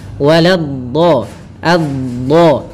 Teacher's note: salah satu sifatnya istitalah, memanjang dulu dotnya. Waladhdha, adha, maka waladhdallin.